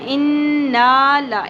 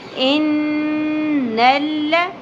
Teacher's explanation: غنہ کرتے کرتے زبر کو زیادہ نہیں کھینچنا، ان نا لا اس طرح نہیں پڑھنا، ان نل ذال نرمی سے ادا ہوگا، دال کی شکل کا جو ذال ہوتا ہے ود ڈاٹ وہ کیا ہوتا ہے؟